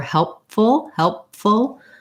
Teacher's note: i close my lips for the pee so i don't want to leave it off entirely